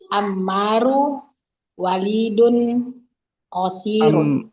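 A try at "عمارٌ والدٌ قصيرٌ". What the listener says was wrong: Ammarun. Kan nama orang tanwin yang laki-laki.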